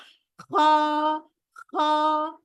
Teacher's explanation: আমার খতে অনেকের দেখেছি আমি খ বলেছে, বাংলা খ, হই, ওরকম না। আরবি খটা একটু ভেতরে